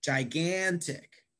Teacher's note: This word has three syllables. Gigantic, right? Three syllables. And I emphasize the second syllable. Gigantic. Can I hear you say that?